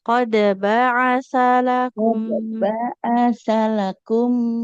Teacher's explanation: Enggak boleh panjang. Sya juga jangan dipanjangkan karena enggak ada huruf madnya.